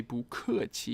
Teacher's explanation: notice here that 不 changes its tone because it is followed by another fourth tone